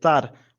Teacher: And then our last syllable here, tar, we're getting a bit of a harder, more pressed A